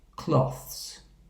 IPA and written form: klɒθs (cloths)